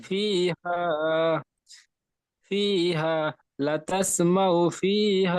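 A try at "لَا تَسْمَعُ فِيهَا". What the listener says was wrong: লাতাস বলছেন, লা টান দিয়ে পড়তে হবে। লা তাসমাউ ফিহা।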